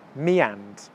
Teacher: all of a sudden there's a Y sound